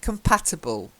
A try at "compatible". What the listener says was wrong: not ibble, ubble. Compatible. That's better.